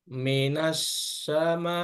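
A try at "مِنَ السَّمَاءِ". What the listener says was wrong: Bunyi sa-nya kurang pas. Minas, minas, bukan.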